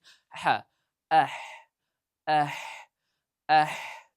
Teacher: Bu ham xuddi aynga o'xshab nima? Halqumning o'rtasidan chiqadi. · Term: ha harfi